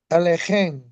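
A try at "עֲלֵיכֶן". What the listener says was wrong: Alechen. We have a segol at the end, so the stress changes. Not Alechen, but Alechen. That segol changes the stress. And this is Alechen.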